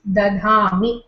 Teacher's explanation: So, Dha, Dha, Mi, when you combine, it becomes Dadhami. The first Dha loses its aspiration, it becomes Alpaprana. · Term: Grassmann's law